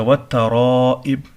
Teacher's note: اچھا، والترائب، یہاں پہ مد متصل ہے، مد اور حمزہ دونوں ایک کلمے میں ہے، بڑا مد ہے، اور با حروف قلقلہ میں سے ہے. جب ہم اس کو ساکن کریں گے وقف کی صورت میں تو قلقلہ ہوگا